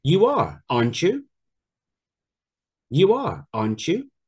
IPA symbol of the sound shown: tʃ